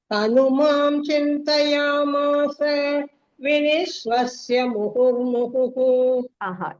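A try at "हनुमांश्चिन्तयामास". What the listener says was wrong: It is Hanumam Chinta. There is a ish you have to say there.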